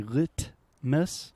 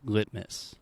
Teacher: So when I'm really speaking slowly and I say litmus, I'm using what we call a true T sound. So the only difference between a true T and a stop T is with the stop T, I am not aspirating.